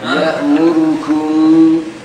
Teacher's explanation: الميم هي الغنة. الكاف has no غنة.